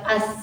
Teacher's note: rakhah, suara terlepas, aliran suara terlepas bebas saat kita mengucapkan. Contohnya seperti lafaz as.